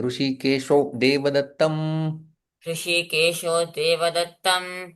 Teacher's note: विसर्ग का ओ में परिवर्तन, संधि हो जाती है